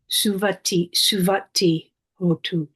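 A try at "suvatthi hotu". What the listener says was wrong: Okay, being very careful to hold that double T, suvati.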